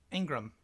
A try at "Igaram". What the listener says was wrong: Igaram. There's no N. Igaram.